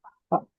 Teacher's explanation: bibir bawah ketemu dengan gigi seri ujung. Gigi seri atas paling ujung. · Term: fa